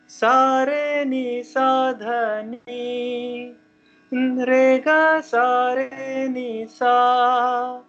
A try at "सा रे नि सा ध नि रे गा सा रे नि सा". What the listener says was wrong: रेगा सारेनिसा का, रेगा सारेनिसा का सुर अलग, रे अलग गा लिया आपने। हाँ, ऊपर वाला अलग हो गया।